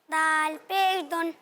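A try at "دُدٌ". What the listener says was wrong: दाल पेश दुन, दाल पर तो 2 पेश है बेटा।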